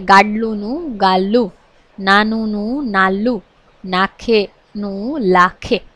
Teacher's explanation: ડ અને ન અમુક સંજોગોમાં એ એનો લ થઈ જાય છે